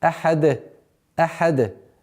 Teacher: При остановке танвин аннулируется и переходит в сукун. И появляется новое правило аль-калкаля. То есть взрывность звука даль.